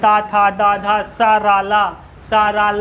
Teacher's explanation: ये आपको दांतों से टच होकर बोला जाता है।